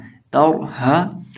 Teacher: हा को पढ़ेंगे, हा के पढ़ने का तरीकाकार है हा अदा होता है हलक के आखिरी हिस्से से, हलक के आखिरी हिस्से से जो सीने से मुत्तसिल है · रॉ को पुर इसलिए करेंगे क्योंकि रॉ साकिन से पहले ज़बर है, रॉ साकिन हो और रॉ साकिन से पहले ज़बर ये पेश हो तो रॉ को मोटा किया जाता है। अब यहाँ रॉ साकिन से पहले ज़बर है तो रॉ साकिन को मोटा करेंगे